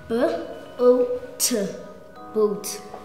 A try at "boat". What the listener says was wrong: I think you were a bit too heavy on the T. Very soft T sound. Very soft T at the back.